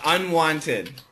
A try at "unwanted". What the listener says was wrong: Unwanted. Yeah, you skip the T sound. Unwanted.